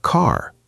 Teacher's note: in American English, the R is very strong, very clear.